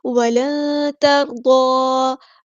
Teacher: تا باریک light letter ہے، را ہمارا ہیوی لیٹر ہے، پر ادا کریں گے، اور ضاد بھی ہمارا ہیوی لیٹر ہے، پر ادا کریں گے، حرکات مدائیہ تو ایک الف کے برابر لمبا کریں گے۔